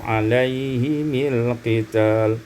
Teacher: dikasrahkan mim secara wasal alaihimil qital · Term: kasrul mimi waslan